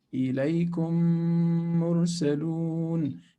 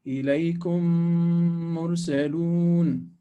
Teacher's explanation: we close the lips. We don't leave the small opening because we're not trying to hide the quality of the meme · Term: Idgham shafawi